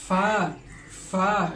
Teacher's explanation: নিচের ঠোঁটের পেট সামনের উপরে 2 দাঁতের আগের সঙ্গে লাগিয়ে ফা উচ্চারণ করতে হয়। ফা উচ্চারণ করার সময় আমাদের উপরে 2 দাঁত এবং নিচের ঠোঁটের পেটের সঙ্গে এসে মিশবে, তারপর ফা উচ্চারণ করতে হবে।